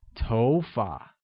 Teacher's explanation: hair translates as TOFA and carries the mid rising tone on Oh making it TOFA great now let's learn to say